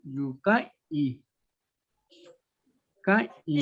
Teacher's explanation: ahí dice K, I, pero hay una nasal antes de la I, K, I. Sí, es que la lengua en automático es nasal.